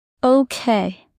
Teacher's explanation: In casual speech, stress is often on the second syllable.